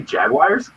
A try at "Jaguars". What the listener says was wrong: Yeah, there's no I in Jaguars.